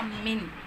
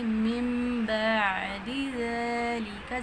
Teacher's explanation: میم کے ساتھ نون کو ہم نے بدلا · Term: اقلاب